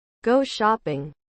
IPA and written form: gouˈʃɒp.ɪŋ (Go shopping)